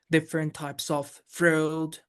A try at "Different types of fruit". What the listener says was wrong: It doesn't quite sound rhythmic.